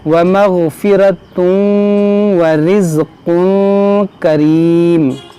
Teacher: यहाँ पर आप देखें तनवीन के बाद वाव है, यहाँ पर इदगाम करेंगे, यहाँ तनवीन के बाद काफ है तो यहाँ पर इख्फा करेंगे।